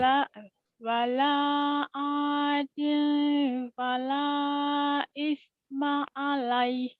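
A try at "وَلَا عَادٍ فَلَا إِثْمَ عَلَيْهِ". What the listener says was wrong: Alaihnya jadi panjang, jadi madlin. Alaih gitu ya. Jadi panjang.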